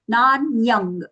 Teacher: Here we are using the ang sound for the anuswara because the reason it is followed by the letter ga. So we have to use ka varga's nasal consonant ang.